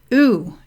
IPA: u